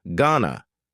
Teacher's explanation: Going to is generally pronounced with a schwa, gonna. You gonna ask him out or not? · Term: informal contraction